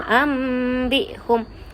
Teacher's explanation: Nun sakinah itu ditukarkan bunyi kepada bunyi mim. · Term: iqlab